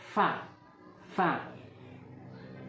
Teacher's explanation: fa ialah huruf yang keluar karena bagian dalam bibir bawah bertemu dengan ujung-ujung gigi seri atas